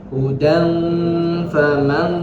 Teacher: hudan tanwin ketemu dengan fa, maka apa bacaannya? Ikhfa, berarti dimungkinkan dengan samar